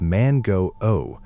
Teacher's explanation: So, instead of mango like you'd say it in English, you need to articulate it as man go O, consciously drawing out that final O sound. It makes all the difference. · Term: long vowel